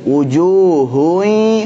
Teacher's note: Nah, ketika idgham bi gunnah, ketika masuk kepada ya, wujuhui baru masuk ke hidung.